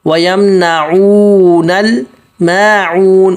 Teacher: عین حلق سے نکالنا اور کھینچنا ایک الف مد کے برابر کیونکہ واو مد ہے وَيَمْنَعُونَ الْمَاعُونَ میم پتلا آگے عون عین نکالنا ہے واو مد